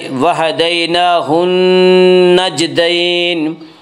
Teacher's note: نون مشدد غنہ ہوگا، غنہ کی مقدار ایک الف ہے